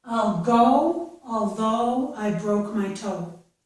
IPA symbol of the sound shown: oʊ